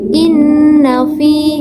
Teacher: lidah kita ini otomatis tidak menempel pada langit-langit yang ada di atas. Inna fi. Nah, dia terpisah ya. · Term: infitah